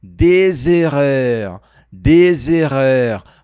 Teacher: uma pequena ligação com o som de Z